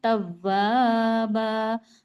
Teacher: سکتے ہیں، تو آپ تشدید والا حرف تو واو ہے نا، تو واو کو ہم سختی سے پڑھیں گے، دو بار پڑھیں گے، ایک بار پہلے والے حرف سے ملائیں گے اور ایک بار اس کا خود کا وجود ہے اور الف مدہ تو ہو ہی رہا ہے نا، توابا، اب